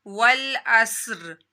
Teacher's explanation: صاد حروف مستعلیہ میں سے اس کو موٹا بھی پڑھنا اور اس کی سیٹی بھی نکالنی ہے